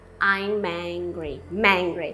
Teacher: Eu tô conectando o M com o angry.